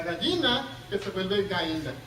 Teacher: se llama debilitamiento de yod, y eso involucra a la Y y a la doble L